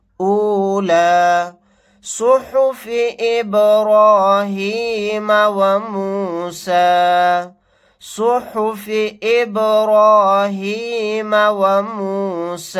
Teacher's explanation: سواد کو یہاں پر موٹا یعنی پر پڑھیں گے، با ساکنہ یہاں پر قلقلہ کر کے پڑھیں گے. را کو یہاں پر موٹا پڑھیں گے.